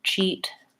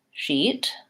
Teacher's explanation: same e vowel so my only difference here is really with the CH sound I need to push that out versus the SH sound is this continuing sound